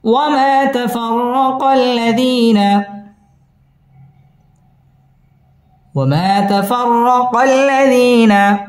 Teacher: ওয়াও ঠোঁট গোল করে উচ্চারণ করতে হবে। ওয়ামা মধ্যে তবাই এক আলিফ টেনে পড়তে হবে। তাফাররা পুর হবে।